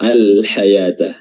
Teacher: Lamnya dibaca izhar, lam sukunnya dibaca izhar, dibaca jelas.